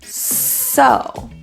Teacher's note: my S is now rounded because I'm anticipating the O rounding of that vowel